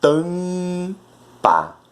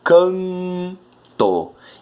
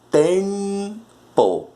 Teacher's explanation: Que é o A, o E, o I, o O e o U, seguido de M e N. O M e o N sempre nasalizam